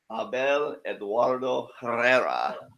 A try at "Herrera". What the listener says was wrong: Well, in Spanish, H's are silent, so it would be Herrera.